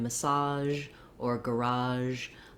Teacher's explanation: some americans will say those words with a j sound instead